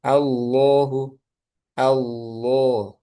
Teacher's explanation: Nah, kalau tebal itu ada campur tangan dari pangkal lidah. Pangkal lidahnya main juga itu ang al nanti ee mana yang bisa misalnya alsa alfa mana yang paling mudah dicari dulu.